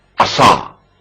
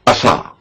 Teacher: سین کی آواز باریک ہوگی جس میں دانت بند ہو جائیں گے، اور صاد کی آواز کے وقت دانت کھول دینے پڑیں گے · سین کی آواز ہلکی اور باریک سنائی دی جائے گی۔ صاد کی آواز موٹی اور پر سنائی جائے گی۔